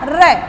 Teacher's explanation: यदि मैं रे का उच्चारण करती हूँ तो एक बार मेरी जीभ ऊपर की तरफ जाएगी और फिर आगे की तरफ लुढ़कती है। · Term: लुंठित या प्रकंपित वर्ण